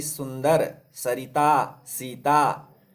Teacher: जिसमें जीभ बिल्कुल नहीं मुड़ती है वह है दंत्य श